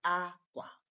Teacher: when you use a higher tune and then you end in low tune like aqua, that is higher to low tune, you are referring to clothes or clothing.